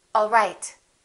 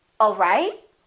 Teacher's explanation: One is falling intonation and one is rising intonation.